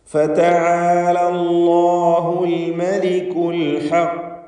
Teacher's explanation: പല്ലിൻ്റെ ഉള്ളിൽ മുകളിൽ മോണയിൽ നിന്നാണ് ലാമിൻ്റെ ഉച്ചാരണം വരിക.